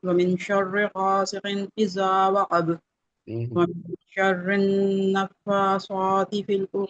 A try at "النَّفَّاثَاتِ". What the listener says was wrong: صوتی سا کو موٹا کیوں کر رہی ہے صوتی تھوڑی ساتھی یہ موٹا کرنے والا تھوڑی ہے ومن شر النفاثات في العقد